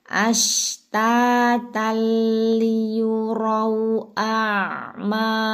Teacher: tengah lidah naik karena ini huruf syin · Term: huruf shin